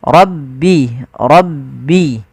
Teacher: Suara rya ditebalkan ro.